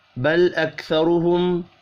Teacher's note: را کو پر پڑھیں گے پیش کی وجہ سے